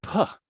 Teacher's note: that's a non-voiced bilabial consonant